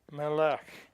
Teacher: So the words Bait and Melech and Na'ar are all accented on the first syllable. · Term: accent on the front